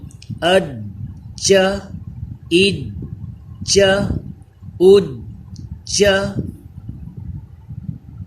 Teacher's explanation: جیم یہ پھر حروف قلقلہ آ گیا ہے، اس میں جماؤں کے ساتھ قلقلہ کیجئے،